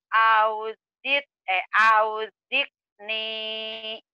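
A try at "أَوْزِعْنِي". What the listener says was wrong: Ain bukan ka, auzir nih. Auzir nih, ain bukan auzik nih, auzir nih. Auzir kayak nelen ya, kayak keselak. Auzir, zir nih, auzir nih.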